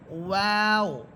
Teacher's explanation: ওয়াও হরফ ঠোঁট গোল করে পড়বেন